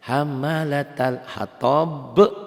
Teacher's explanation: b-nya qalqalah kubro, huruf qalqalah dimatikan ya. Hurufnya ini ba-nya hidup dimatikan jadi qalqalah kubro.